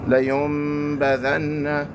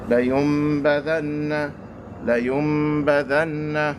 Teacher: there has to be ghunna associated with iqlab. That means you have to hold the sound for 2 harakas.